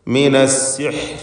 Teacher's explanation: അസ്സിഹ്ർ എന്ന് പറയുമ്പോൾ വഖഫ് ചെയ്യുന്ന റായിൽ തർക്കീഖാണ് വരിക